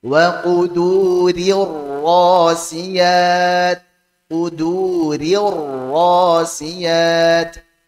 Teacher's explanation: Perhatikan, ri-nya, ri tipiskan dulu, kemudian ra tebal begitu saja